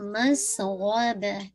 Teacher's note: مس سین پہ وسل کا ساؤنڈ ہے. غین کو ہیوی با لائٹ رکھیں گے ٹھیک ہے.